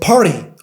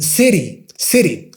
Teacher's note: the soft R, which is kind of pronounced like the D sound in American English. For example, in the word party or in the word city.